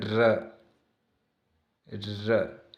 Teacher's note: जिसका उच्चारण करते समय जीभ तालु से लुढ़क स्पर्श करे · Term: कुटिल